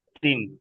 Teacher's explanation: তানমিন ও নুন সাকিনের জি, পরে ইয়া ওয়াও মিম নুন এসছে, মিম এসছে, তাই তানমিনকে মিমের সাথে মিলিয়ে একালিফ পরিমাণ গুণনা, তা মিম জের টিম, টিম হবে, তিম, তিন হবে না। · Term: ঈদগামে নাকিস